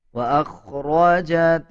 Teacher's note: اذا زلزلت الارض زلزالها واخرجت الارض اثقالها، واخرجت حمزہ کو خوا کے ساتھ ملا کے پڑھا جائے گا۔ خوا موٹے حروف میں سے آتا ہے، خوا کو پر یعنی موٹا پڑھا جائے گا